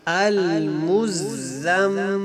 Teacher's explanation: میم کے اوپر شد ہے، یہاں پہ غنہ کریں گے